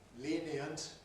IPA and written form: ˈliːniənt (lenient)